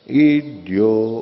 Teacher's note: ईड्यो का जो यो है वो अनुदात है। ईड्यो नीचे आता है अनुदात में, तो उसको वो क्या करते हैं, ईड्यो, यानी यो जो बोला था उसको ओ और बोलते हैं, लेकिन बोलते हैं अनुदात हैं वो।